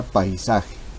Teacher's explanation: en la sílaba pai se presenta la concurrencia vocálica de una vocal abierta y una vocal cerrada. Entonces, fácilmente podemos encontrar nosotros la presencia del diptongo, teniendo especial cuidado de comprobar de que ambas vocales pertenezcan o estén presentes en la misma sílaba.